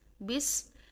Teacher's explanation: کسرہ کو جب پڑھتے ہیں تو اس میں ای کی ساؤنڈ لے کر آتے ہیں، بس۔ تو بس، با کی زیر کو ہم بہت باریک انداز میں پڑھیں گے، اور سین کے ساتھ جب ہم اس کو ملائیں گے تو سین میں سیٹی پیدا کریں گے۔